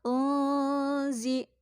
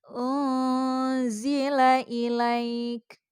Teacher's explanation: nun itu dibacanya samar-samar sambil berdengung. Jadi cara bacanya antara samar-samar dengan dengungan itu seimbang dia. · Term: ikhfa